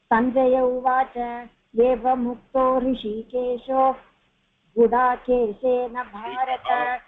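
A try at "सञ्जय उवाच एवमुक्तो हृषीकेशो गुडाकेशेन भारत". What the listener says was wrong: விசர்க்கம் வரணும் அங்கெல்லாம். நிறுத்த சமயத்துல are giving a gap, then you have to give the visargam varna.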